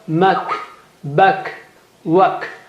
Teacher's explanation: If there is sukoon on kaf and ta, the breath should not be stopped while pronouncing it, while saying it, while articulating it. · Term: hams